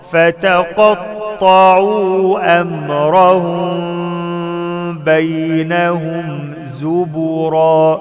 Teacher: ميم ساكنة وبعدها باء إخفاء مع الغنة